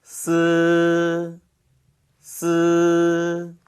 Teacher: 첫 번째 스 먼저 볼게요이 스 발음은 쓰나 스 발음과 똑같이 혀끝을 윗니 뒤쪽에 대고 그 사이에 바람을 통과시키면서 발음하시면 되겠습니다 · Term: 쓰 발음